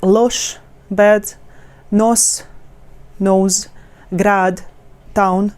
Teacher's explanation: For example, if we take like short words, like loš, bed, nos, nose, grad, town, we have just one vowel, so the emphasis goes sharp. We're lifting by the intonation sharply this one vowel.